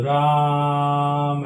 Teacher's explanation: अब राम इसमें दो मात्रा से ज्यादा का समय लगता है। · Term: प्लुत स्वर